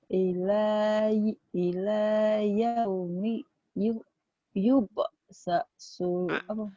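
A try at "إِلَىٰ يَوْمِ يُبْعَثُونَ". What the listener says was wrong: A-nya ketinggalan. Yub'atsuna. A-nya ketinggalan. Yub'atsuna.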